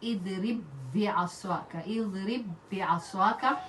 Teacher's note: You will merge these two letters and read them as one letter by putting shadda in the second one. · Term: idgham